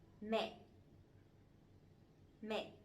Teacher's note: But this one has the dot, the dấu nặng, the strong tone, so it has to be down and it has to be stronger a little bit